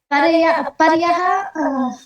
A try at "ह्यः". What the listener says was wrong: केवलं नाम भवत्याः ह्यः इति उच्चारणे दोषः आसीत्। परयः परयः वदति पर्ह्यः इति तु किञ्चित् सम्यक् आसीत्, ह्यः भवति अर्धः तदनन्तरं या विसर्गः।